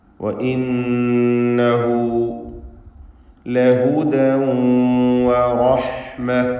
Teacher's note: ലഹുദൻ ഇതിലുള്ള തൻവീനിന് ഇദ്ഗാം ബിഗുന്നഹ് നാഖിസ് നൽകി ശേഷമുള്ള വാവിലേക്ക് ലയിപ്പിച്ച് മണിച്ചുകൊണ്ട് ഉച്ചരിക്കേണ്ടതാണ്.